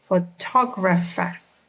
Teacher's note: The word photographer has 4 syllables. Photographer. Notice that the stress falls on the second syllable.